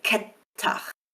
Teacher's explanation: I can lengthen the T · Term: gemination